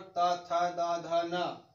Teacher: ता वर्ग हमारा जो है इसको बोला जाता है दंत से